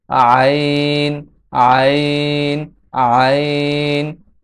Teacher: আইন হরফটি কণ্ঠনালীর মধ্যখান হইতে উচ্চারিত হয়।